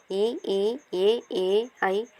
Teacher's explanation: வாய் திறத்தலோடு மேல்வாய் பல்லை நா விளிம்பு தொடுவதால் பிறக்கின்றது